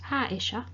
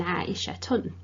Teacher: when I said Aisha, it has a bit of a ha sound rather than Aishatun